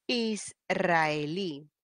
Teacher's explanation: van a tildar verdad hará de última penúltima y antepenúltima israelí está recibiendo la mayor fuerza de voz la última sílaba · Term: aguda